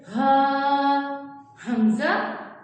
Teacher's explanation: یہ گلے کے نیچے والی سائڈ سے ادا ہوتے ہیں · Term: حروف حلقی